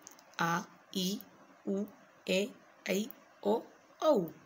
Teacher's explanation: इनके उच्चारण में ह्रस्व स्वरों के उच्चारण से दुगुना समय लगता है, ये 7 हैं। इन्हें देखिए, आ, ई, उ, ए, ऐ, ओ, औ। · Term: दीर्घ स्वर